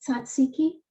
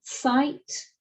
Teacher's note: it's a combination of a stop plus a continuant or a fricative